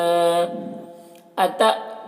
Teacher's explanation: अत देखिए यहाँ पर हमज़ा साकिन है, झटका लगेगा